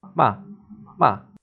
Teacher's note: the fourth tone is sharp and it falls, 骂 骂 like a command.